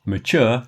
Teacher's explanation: Mature has the stress on the chure, so it's longer than it is in nature.